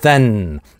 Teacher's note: Здесь у нас краткий гласный /ɛ/, а дальше сонорант /n/ и then, /n/ растягивается.